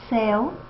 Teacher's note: o ditongo decrescente apresenta a parte inicial do ditongo mais proeminente do que a parte final ou seja o início ele tem é uma força maior então · o E é mais forte que o U